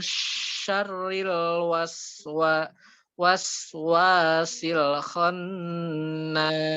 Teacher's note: makhrajnya itu bukan di mulut ya, bukan di mulut, tapi itu ada di tengah-tengah lidah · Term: huruf shin